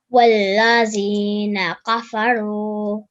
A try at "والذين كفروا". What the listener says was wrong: Okay, remember the. Say the word the. Like you say the cat. So the sound. There shouldn't be a buzzing sound there.